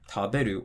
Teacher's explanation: counting from the end, ru, be, the drop's going to be after the be